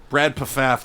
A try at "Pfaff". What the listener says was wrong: I think the P is silent. I think it's Feff. Brad Feff.